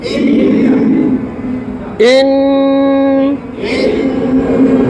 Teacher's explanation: নাক থেকে উচ্চারণ হয়, মুখ থেকে, মুখ দিয়ে হয় না, নাক দিয়ে। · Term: গুণ